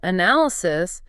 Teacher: But when we move to the noun form analysis, the stress shifts backward, right? It moves to the second syllable.